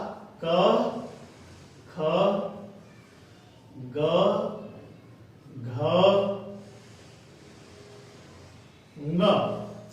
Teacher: इन सब का उच्चारण स्थान कंठ है। और ये जो ध्वनियां हैं ये हैं कंठ ध्वनि।